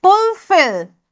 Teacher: again the word fulfill is pronounced with more force on the second syllable